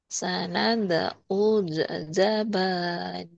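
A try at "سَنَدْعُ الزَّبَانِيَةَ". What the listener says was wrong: Jangan ada e-nya semua. Sanad, nah itu yang de-nya di situ doang. za-nya jangan ada kol-kolahnya.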